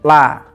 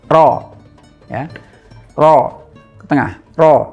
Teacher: Ro juga sama dengan huruf lam punya sifat inhiraf, hanya saja inhirafnya lam dan ro itu berbeda. Kalau inhirafnya lam itu keluar, kalau inhirafnya ro itu ke dalam. Jadi bunyinya ngumpul ke tengah